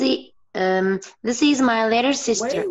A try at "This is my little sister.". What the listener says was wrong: Wait. Don't say E. This is.